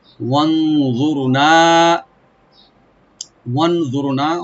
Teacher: ওয়া ওপেন রেখে নুন সাকিন এখানে আমরা ইখফা করব, লাইট গুন্না। ওয়াটাকে রাইট দিয়ে রা একটু ডিপ করে নুন একালে টানবো আমরা ওপেন করে।